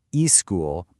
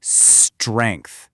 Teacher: Really hold that S for just a second before you launch into the rest of the word. It makes all the difference. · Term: long, hissing s sound